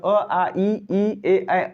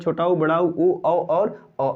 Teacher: इन दोनों में पहले जो अवृत्तमुखी स्वर है उसके अंतर्गत अ, आ, ई, ए आते हैं, और वृत्तमुखी स्वर के अंतर्गत छोटा ऊ, बड़ा ऊ, औ और अ आता है